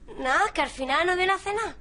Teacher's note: Después van a ver otro proceso que todavía no hemos visto, que es la elisión de D intervocálica. Entonces, en lugar de decir nada, dice na, que al final no viene a cenar.